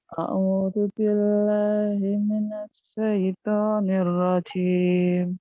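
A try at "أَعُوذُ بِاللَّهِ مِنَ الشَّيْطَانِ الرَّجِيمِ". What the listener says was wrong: Shinnya dibuka. A'udzu billahi minasyaitonir rajim. Shinnya buka. Shin.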